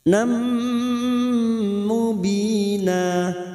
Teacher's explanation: Nun sukun atau tanwin yang bertemu dengan 4 huruf ini ya nun mim waw siap masuk dan mendengung masuk pada huruf berikutnya yaitu huruf mim dan mendengung selama 2 atau 3 harakat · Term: gunnah